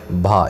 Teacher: हिंदी की स्पर्श घोष महाप्राण ओष्ठ ध्वनि है?